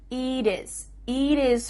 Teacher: let's change that T to a D and make sure that you cut off the H. · Here, the final T is changing to a D.